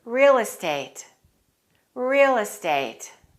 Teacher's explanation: Let's connect real and estate. Say them as one word.